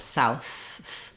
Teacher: and then the TH is voiceless, south.